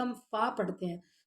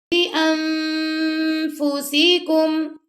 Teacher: اور جب اخفا کریں گے نا تو جو آپ کے ٹیتھ ہیں جب ہم فا پڑھتے ہیں تو فا پڑھتے وقت جو اوپر کے ہمارے ٹیتھ ہوتے ہیں نا تو وہ ہمارے جو نیچے والا لپ ہے اس کے ویٹ پارٹ سے ٹچ کر رہے ہوتے ہیں